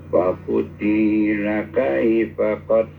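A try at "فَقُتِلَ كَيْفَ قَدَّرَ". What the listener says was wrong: Jangan dipanjangin tinya. Fakutila.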